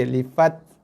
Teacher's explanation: Tekan dulu, lepas baru keluar sedikit hembusan nafas. Sikit aja, lifat.